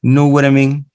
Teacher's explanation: Miren ese simbolito que hay debajo de la T, que me da a entender lo que dijo hace un momento, que esa T, ese sonido ta, yo lo voy a aplanar y el ta se convierte en ra